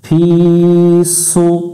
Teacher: ফায়াজের ফি, জেরের বামে ইয়া সাকিন এক আলিফ টানতে হয়, এক লেখা দেখে এক আলিফ টান দিব। সদ পেশ সু একটু মোটা করতে হবে